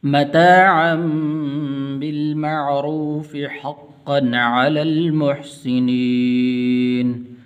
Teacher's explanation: حقا یہاں پر غنہ نہیں کریں گے کیونکہ آگے عین حروف حلقی میں سے ہے